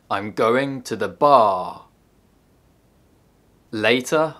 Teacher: dress in order to emphasize or contrast information in that sketch i exaggerated the word bar in order to emphasize the most important information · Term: sentence stress